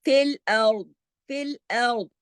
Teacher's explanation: اس میں را اور دعات دونوں موٹے پڑھے جائیں گے. فی الارض، اگر ہم یہاں رکتے ہیں تو دعات کو موٹا پڑھ کے چھوڑ دیں گے، اس کے نیچے جو زیر ہے اس کو ہم پوز کر دیں گے.